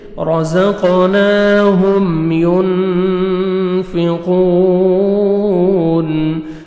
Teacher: نون ساکن کے بعد فا ہے، حروف اخفاء میں سے نوز میں ساؤنڈ لے کے جائیں گے